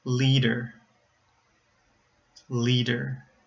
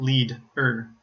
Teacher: I said the D at the beginning of the second syllable, not the end of the first syllable